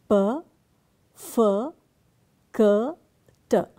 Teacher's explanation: These consonant sounds in which the vocal cords do not vibrate are p f k t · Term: voiceless consonants